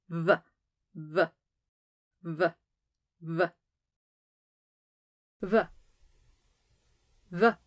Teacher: Honestly, it sounds a bit halfway in between. Put two lips close to each other to make a V sound, but don't touch your teeth to your lips to make a V sound like English V. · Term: Veta